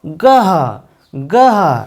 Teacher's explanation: এই গয়ের সঙ্গে যদি হ ধ্বনি যুক্ত করা হয় এবং তার সঙ্গে অধ্বনি থাকবে তাহলে এর উচ্চারণ হবে গহ গহ